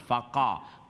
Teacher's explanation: qaf quality of isti'ala, that's why qaf full mouth. Mani bari awaz, heavy sound.